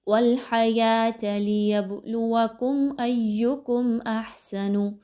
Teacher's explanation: میم ساکن کے بعد حمزہ آ رہا ہے اور دوبارہ ایکم کے بعد میم ساکن کے بعد حمزہ ہی آ رہا ہے، اور حمزہ اگر آ جائے میم ساکن کے بعد تو وہاں پر اظہار شفوی کیا جاتا ہے۔ آپ نے بالکل بھی نہیں رکنا میم پر، تھوڑی دیر کے لیے بھی غنہ نہیں کرنا